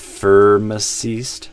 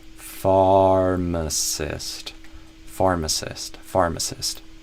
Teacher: I would add that little a sound on the way, you know, between the f and the r.